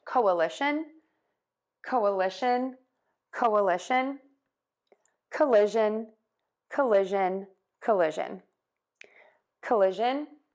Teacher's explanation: we are going to stress the li syllable and each of these words that means it's going to be louder longer and higher than the others which are going to be shorter softer and lower in pitch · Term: stress the l syllable